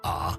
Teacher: The third tone falls and then rises again. A. When pronounced clearly, its tonal dipping is very distinctive.